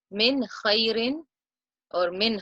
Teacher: followed by the letter heart so we will apply it and recite it clearly and show off the noon without any nasalization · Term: Id-haar